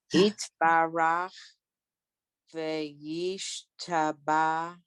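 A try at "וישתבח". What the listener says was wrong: You have to hear that chet.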